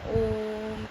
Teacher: प्लुत स्वर, जिन स्वरों के उच्चारण में दीर्घ स्वर के उच्चारण से भी अधिक समय लगता है उन्हें प्लुत स्वर कहते हैं। जैसे जब हम ओम का उच्चारण करते हैं तो हम ओम में ओ को लंबा खींचते हैं,